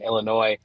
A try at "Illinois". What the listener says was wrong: Wait, hold on. You don't pronounce the S.